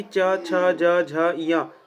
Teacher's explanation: च वर्ग को तालु या तालव्य वर्ण कहते हैं। इसका जो उच्चारण स्थान है वह तालु है।